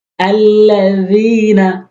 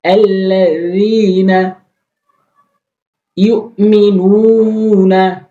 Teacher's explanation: আল্লাযীনা, অধিকাংশ লোক যেটি ভুল করে আল্লাযীনা বলে, জালটি জিহ্বার আগা দাঁতের আগার সঙ্গে নরমালি। আল্লাযীনা ইউমিনুনা, ইউমিনুনা, নুন টেনে পড়তে হবে।